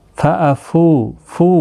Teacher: واو مدہ ہے، ایک الف کی مقدار کے برابر کھینچ کر پڑھیں گے